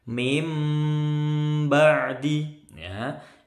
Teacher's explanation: min nun sukun ketemu ba. Dengung lama, dengungnya mingkem. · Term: bacaan iqlab